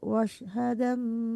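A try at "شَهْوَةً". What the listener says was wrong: Syah bukan wash tapi syah.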